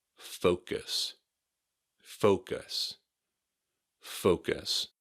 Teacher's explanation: Just be sure to say focus with an O sound, and not an uh sound.